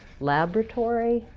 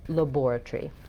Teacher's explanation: So we have Tory, but they have tree. They reduce that part to one syllable.